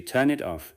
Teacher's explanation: It sounds closer to turn it off with the n and it blending together and the t and off blending together as well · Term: linking